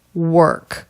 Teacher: This is how we do it in American English. This vowel doesn't really have a sound by itself. It just blends with the R. K. Work. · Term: R vowel consonant combination